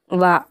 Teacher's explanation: దంతోష్టం వక్కటే ఒక హల్లు